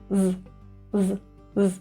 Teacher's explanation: This Z is very short and actually kind of quiet.